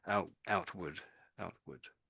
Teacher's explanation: it's got ward on the end, but we don't say ward. We actually say wood as if it was w o d.